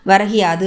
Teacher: முதல் சொல்லான வரகு அப்படிங்கிறது, இறுதியில் இருக்கக்கூடிய கு அப்படிங்கிற எழுத்து, அடுத்த சொல்லோட சேரும்போது ஈ என்று மாறுகிறது.